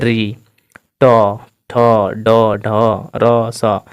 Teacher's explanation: जिसको बोलने पर हमारी जीभ मुड़ जाए। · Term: मूर्धन्य वर्ण